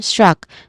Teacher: Again, struck. So we start with a consonant cluster of this individual sounds of S, T, and R. And then we followed by a schwa sound and a letter K sound at the end